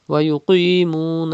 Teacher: qaf is also mustalia letter and it is thick